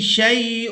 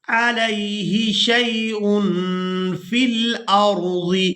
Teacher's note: تنوین کو جب ہم ادا کرتے ہیں تو اس میں نون کی آواز ہوتی ہے، اس نون کی آواز کو ہم نے ناک میں چھپا کر ادا کرنا ہے، اس کو کہتے ہیں اخفا کرنا۔